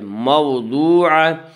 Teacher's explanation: گول تا وقف کی صورت میں ہائے ساکنہ بن جاتی ہے